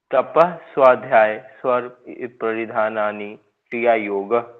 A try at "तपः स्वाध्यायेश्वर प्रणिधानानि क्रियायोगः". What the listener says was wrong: तप स्वाध्याय, ईश्वर नहीं भूलेगा यहाँ पे, स्वाध्यायेश्वर। ठीक है, ये के बाद सीधा श बोलना आपने, ई नहीं आएगा यहाँ पे। तपः स्वाध्यायेश्वर प्रणिधानानि क्रिया योग।